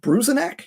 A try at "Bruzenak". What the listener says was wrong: Yeah, Bruzenak. You don't have to pronounce the. You don't have to be real big on the E. Just Bruzenak.